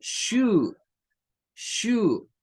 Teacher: nos aparece el sonido U como una prolongación, se parece al sonido de la U nuestra · Nótese que aquí en el que se nos pone aparece como dos V, como que nos dice, bueno, prolonga el sonido de la U en dos tiempos